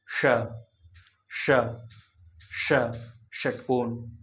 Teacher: ये जो है मुर्धन्य स इसका उच्चारण जो होता है मुर्धा से होता मुर्धा मुर्धा बोले तो तालू के जस्ट ऊपर ष ष ष